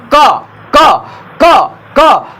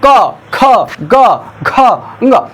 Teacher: यहाँ पर, यहाँ से जैसे कंठ से ये आवाज़ निकलती है, जो आवाज़ कंठ से निकलती है उसको क, ख, ग, घ, ङ, जो आवाज़ें कंठ से निकलती है उसे हम कंठव्य कहते हैं, कंठ कहते हैं। कंठ वर्ग में समूह में आता है।